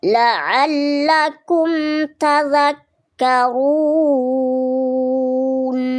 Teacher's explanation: Mim sukunnya hanya punya sifat tawassut ya. Jadi hanya menyisakan sifat tawassutnya. Tak perlu ditambah dengan gunnah. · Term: Izhar syafawi